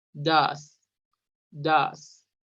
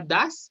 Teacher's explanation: el auxiliar does es entre una O y una A. Es un sonido entrecerrado de O-A.